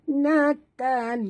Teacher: Okey, bunyikan hamas pada huruf ta yang mati.